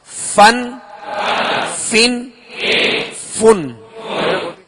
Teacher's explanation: اوپر کے سامنے والے دونوں دانتوں کے جو کنارہ ہے وہ نچلے ہونٹ کے تر حصے سے لگے تو فا ادا ہوتا ہے